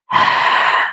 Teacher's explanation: H itu punya sifat rakhawah atau mengalir. Mengalir apanya? Suaranya. Nafasnya mengalir, suaranya mengalir. Jadi, jangan terhenti.